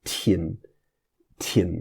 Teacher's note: So you hear the h, there's a little bit of a hissing h after the T